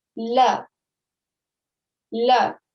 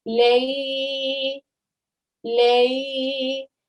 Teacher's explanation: However, when you see the same letter, maftuh lam, and it's got a ya sakin after it, we should be easing the sound of lam into the ya because this is now ya leen, and we should be giving it a 2 second timing. So we're going to say lay, lay.